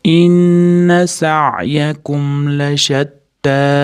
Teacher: Inna g'unna bilan kelyapti, ya'ni tashdidli nun da g'unnasini ushlaymiz. To'rt, besh deguncha ushlab tursa bo'laveradi.